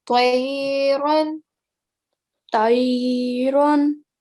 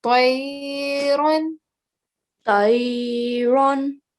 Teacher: So with the ta, you're giving a round mouth and you're softly elongating it because there is a ya sakin letter before that has a fatha. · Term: round mouth letters